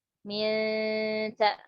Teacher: nun sukun ketemu ta, suaranya samar sekali ya